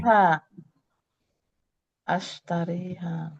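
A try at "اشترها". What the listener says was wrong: Nggak panjang, ya-nya kan dihilangin.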